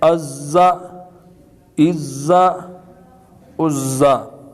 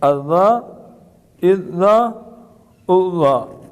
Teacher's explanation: اب زا اور دال قریب الصوت ہیں تو ان کی آواز میں فرق رکھنا ہے۔ یہ جو زا ہے تھوڑا سختی سے ادا ہوگی اور دال نرمی سے ادا ہوگی